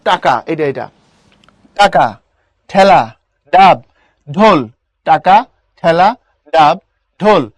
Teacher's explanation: যেখানে তোমার জিহ্বা বারবার গিয়ে টাচ করতেছে, তোমার তালুর ওই জায়গাটার নাম হচ্ছে মূর্ধা।